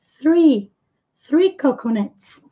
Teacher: com a pontinha da língua presa entre os dentes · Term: TH